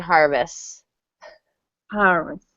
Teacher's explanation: this is a difficult consonant cluster so in in normal speech we probably wouldn't pronounce the T